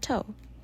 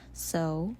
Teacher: The differing sounds within the word pair include the child's error sound, the stop, and the correct target sound, the fricative.